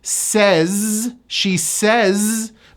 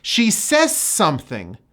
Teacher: This word ends with a voiced Z, says, She says, but in this sentence it turns into an S. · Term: disappearing Z